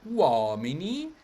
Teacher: So the U here before the O is a glide. So it's not uomini, but uomini.